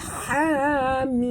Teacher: ha sini 2 harakat, mim sini 6 harakat. Jadi semua sekali 8 harakat.